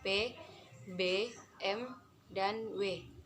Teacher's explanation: bibir bawah menyentuh bibir atas sebagai titik artikulasi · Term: bunyi bilabial